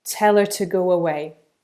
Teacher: the sound on to gets reduced to a schwa, so it sounds more like t.